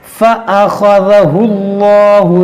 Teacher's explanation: دیکھیے اس اللہ کے لام کو جو ہے موٹا کریں گے, کیوں؟ کیونکہ لام سے پہلے پیش ہے, زبر یا پیش ہو تو اس کو موٹا پڑھتے ہیں.